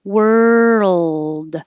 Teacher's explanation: Hold it in the L position for a longer time than you might usually think you need to, so you can hear the L. If you don't hold it in the L position long enough, it could sound like word.